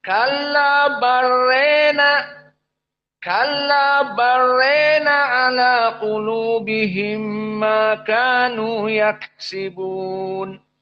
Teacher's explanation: di mana rona dibaca rena, diimalah al-kubro